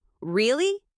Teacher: The word really can mean completely different things depending on how you say it. Really with rising tone means surprise. Really with falling tone means disappointment.